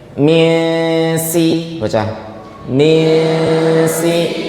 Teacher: Nun sukunnya diucapkan langsung ke makhrajnya huruf sin. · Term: ikhfa